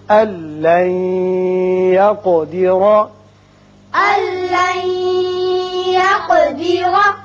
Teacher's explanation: نون ساکن کے بعد جب لام آئے تو یہاں ادغام کرتے ہیں لیکن بغیر غنہ